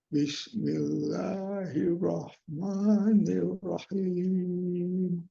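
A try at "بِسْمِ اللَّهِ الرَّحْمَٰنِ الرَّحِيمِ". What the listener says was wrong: tapi di huruf r-nya itu itu ada ee tasdid ya Pak ya Jadi kita tekankan lagi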